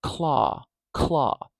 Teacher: actually being said claw claw first we have our C and I have a little H there showing that there's a little puff of air coming out